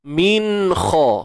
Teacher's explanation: Jelaskan sebutan nun apabila bertemu dengan huruf kha datangnya daripada kerongkong kita. Min kha. Kha tebal jangan kha. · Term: izhar